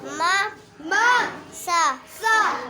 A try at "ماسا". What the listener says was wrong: نہیں نا، ما سا ملایا بھی کرو. ما سا.